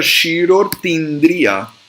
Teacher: Shirorti Indriya vira Shirortindriya. É um I com outro I que vira um Izão, um I longo.